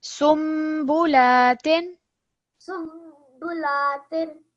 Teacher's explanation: noon sakin is replaced by the meme, and we're pausing 2 seconds